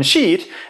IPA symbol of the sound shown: i